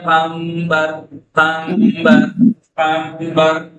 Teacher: نون ساکن کے بعد بے ہے قنبر لیکن پڑھتے ہیں قمبر قمبر قمبر. ٹھیک ہے، نون کو میم سے بدل دیتے ہیں. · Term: اطلاق